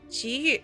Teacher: Yu uses the last tone, the falling tone.